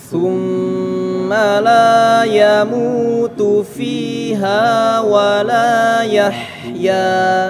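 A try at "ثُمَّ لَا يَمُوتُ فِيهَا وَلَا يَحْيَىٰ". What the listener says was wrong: Hati-hati ya, mim bertasydid maka dibaca dengung, ditahan dulu, jangan tergesa-gesa.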